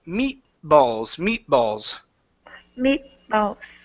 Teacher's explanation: So we pronounce half of the T and then move on to the B.